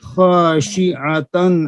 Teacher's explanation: شین کے نیچے زیر کو باریک کریں